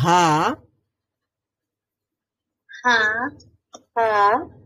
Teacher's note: হা উচ্চারণ করার সময় কিন্তু আমাকে হলকের শুরু থেকে আরেকটু উপরে উঠতে হয় এবং সেখানে এক ধরনের চাপ দিতে হয়